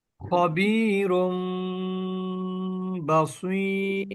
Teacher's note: নুনকে অথবা আপনার তানভীনের মধ্যে যে নুনের উচ্চারণ আমরা পেয়ে থাকি ওই নুনকে মিম দ্বারা পরিবর্তন করব এবং গুন্না করব